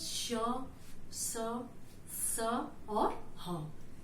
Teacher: ऊष्म व्यंजन का उच्चारण करते समय हवा जो हम बोलते हैं, इन व्यंजनों का जब उच्चारण करते हैं तो जो हवा निकलती है हमारे मुंह से वह घर्षण करते हुए निकलती है, इसलिए वो हवा थोड़ा गर्म होती है।